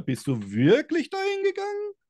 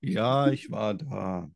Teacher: die Frage geht am Ende hoch und die Antwort geht dann runter